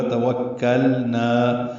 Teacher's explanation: توکلنا، واو ہونٹ کی نا تمام گلائی سے ادا کریں گے، کاف سے ملائیں گے، کاف لام باریک نا الف مدہ. توکلنا، لام اور نون کا ادغام نہیں ہوگا